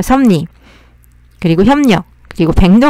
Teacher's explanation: 비읍, 디귿, 기역 뒤에 리을이 왔을 때 최종적으로 비읍은 미음으로, 디귿은 니은으로, 기역은 이응으로 바뀌고 리을은 니은으로 바뀌는데요. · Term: 비음화 현상